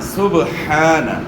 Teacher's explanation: با جو ہے نا ساکن ہے تو با کے اندر آپ نے قلقلہ کرنا ہے